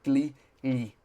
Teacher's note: where you would normally say G you don't quite touch the top of your mouth